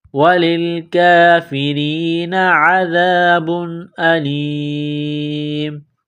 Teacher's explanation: تنوین کے بعد حمزہ ہے، حروف حلقی ہے تو تنوین پر غنہ نہیں کریں گے